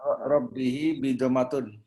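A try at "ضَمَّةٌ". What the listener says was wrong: Gak pakai bi. Dommatun.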